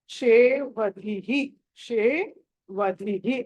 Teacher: అక్కడ స కాదు ష మెలికి ష అది ష అనాలి